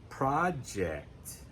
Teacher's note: Now, project is another word that has two pronunciations, depending on whether we're using it as a noun, project, where the stress is on the first syllable, project. If it's a verb, project.